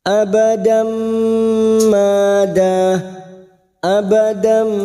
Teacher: masuk pada huruf mim dan mendengung selama dua atau tiga harakat · fathah tanwin bertemu mim idgham bi gunnah, siap masuk dan mendengung masuk pada huruf mim dan mendengung selama 2 atau 3 harokat. Abadam mada, abadam mada, mada masing-masing 2 harokat kita panjangkan. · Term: idgam bighunah